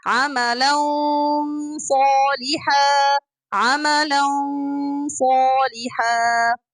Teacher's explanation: The back of the tongue is up and the throat is open so that it will be عملا صالحا عملا صالحا. Allow this sound to come from nose for 2 counts, and then allow the sound of the Ṣād, clear Ṣād, to come very clearly after finishing the 2 counts of ikhfa sound.